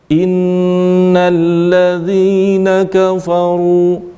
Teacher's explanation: ini ru harus ditebalkan, diangkat bagian belakangnya. Ini bedanya letak lidah bagian belakang ketika ra dibaca tipis dan ra dibaca tebal.